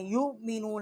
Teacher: واو جو ہے اس کے اوپر حمزہ ہے، جزم ہے، یؤمنون، حمزہ کو ہم پڑھیں گے مخرج سے، اقصائی حلق سے اس کا مخرج ہے